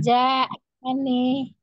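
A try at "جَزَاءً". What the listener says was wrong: Jaza panjang kan? Jaza kan 4 atau 5 harokat disebut tadi di ejanya.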